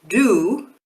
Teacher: if you do the same thing with do they should vibrate the entire time